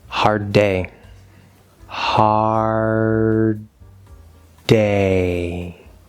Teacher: we're trying to hold that d sound make it a longer d